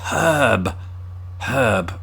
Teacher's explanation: I pronounced it with an H at the beginning, because there's an H there.